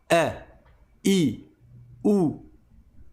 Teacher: Tu vas fermer tes cordes de vocal et tu vas ne laisser passer aucun et aucun son. Au moment où on sort le son e juste avant la voyelle, en fait, tu vas bloquer euh la sortie d'air et la sortie du son. Le son e, c'est ça la hamza.